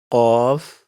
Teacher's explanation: Qaf has a heavy sound. So raise the back of your tongue when you pronounce it.